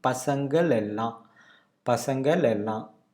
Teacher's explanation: Just to connect that, we had a l sound in between.